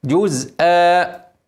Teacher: والهمزه منونه بالفتح لو وفت عليها هنمد حركتين عوض عن التنوين